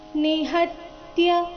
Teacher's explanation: ಹ ಮೇಲೆ ಆಘಾತ ಬರಬೇಕು ಮುಂದೆ ತ್ಯ ಸಂಯುಕ್ತಾಕ್ಷರ ಇದ್ದ ಕಾರಣ